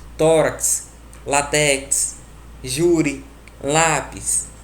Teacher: São aquelas em que a penúltima sílaba é a mais forte. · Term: paroxítonas